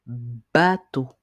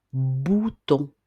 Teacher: Le son B fait des vibrations au niveau des cordes vocales parce que c'est un son que l'on dit voiser.